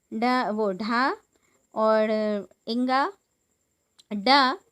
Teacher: फिर है उत्क्षिप्त व्यंजन जिन व्यंजनों के उच्चारण में जीवा की उल्टी हुई नोक जो है वो तालु को छूकर झटके से हट जाती है